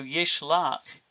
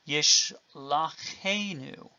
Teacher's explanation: a patak theme vowel, when it occurs in a verb like yishlach, will actually lengthen instead of reducing. So yishlach, but the addition of enu, him, gives yishlachenu, with a lengthened vowel where the patak has become a kametz.